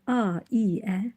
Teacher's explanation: Ailə sözündəki saitlər a, i, ə. Gördüyümüz kimi dodaqlanmayan saitlərdir.